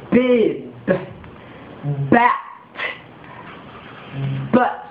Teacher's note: 중요한 것은 B는 울리는 소리로서 유성음입니다. 그래서 소리가 길기 때문에 단어 끝에 오면 몸의 길이가 길어집니다.